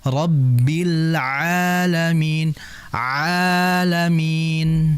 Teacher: Ya, huruf ain itu keluar dari tengah tenggorokan. Ya, tengah tenggorokan, sehingga tidak ada unsur hidung.